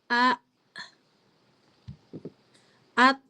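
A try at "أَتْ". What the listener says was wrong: Jangan ats, Ibu. Kalau ats, Ibu nambahin huruf sin berarti. Bunyinya at, at, at.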